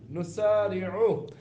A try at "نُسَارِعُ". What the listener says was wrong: سین آپ کا صحیح نہیں ہوا۔